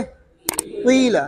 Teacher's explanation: ज़ेर और पेश को दोनों को मिलाकर पढ़ेंगे · होंठों को गोल करके कसरा अदा करेंगे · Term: इश्माम